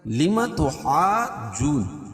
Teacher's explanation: اس کا قاعدہ یہ ہے کہ حروف مدہ کے بعد تشدید بالجزم اسی کلمے میں ہو، اس کو مد لازم کلمی مستقل کہیں گے۔ اور مد لازم کے تمام اقسام میں طول ہے، یعنی اس کو 5 الف تک اس کو کھینچ کے پڑھیں گے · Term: مد لازم کلمی مثقل